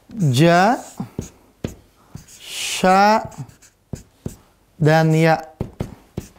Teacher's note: pelajari kemarin ya di sini karena ujung lidah sudah selesai maka Tengah lidah dengan langit-langit